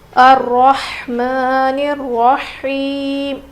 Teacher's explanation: ہا کی آواز بالکل ظاہر ہونی چاہیے، رو موٹا پڑھیں گے، کھڑا زبر ہے میم کے اوپر، الرحمن الرحیم.